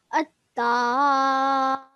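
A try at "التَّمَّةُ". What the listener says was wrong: Just hold your sound a little bit on the meme when you say it, okay? At-tamma.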